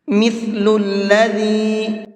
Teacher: مثل الذی، ثا اور ذال دونوں کا پروننسیشن سیم ہے، بہت نرمی کے ساتھ میں پڑھے جاتے ہیں، اور ان کا جو مخرج ہے وہ یہ ہے، زبان کی نوک کو اوپر والے جو سامنے کے 2 دانت ہیں ان سے ٹچ کر کے پڑھتے ہیں